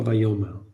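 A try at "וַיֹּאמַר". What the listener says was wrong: Look at the pronunciation of that word, not vayomer. Vayomar. The difference is that Vayomar has a stop.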